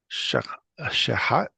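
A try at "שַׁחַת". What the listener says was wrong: Accent the first syllable. Shahath. Shahath.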